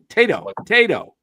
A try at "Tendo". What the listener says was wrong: Tendo. Like Nintendo. There's an N. There's an N there. How do you skip the N?